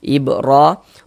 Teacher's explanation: huruf ra dibaca tebal, dibaca tafkhim, sehingga pangkal lisan kita naik terangkat ke atas, tebalkan huruf ra-nya